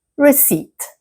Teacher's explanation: But the P is silent. So, the correct pronunciation is receipt. Completely skip skip the P.